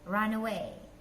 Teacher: Jadi setelah N itu vowel E langsung digabung run away.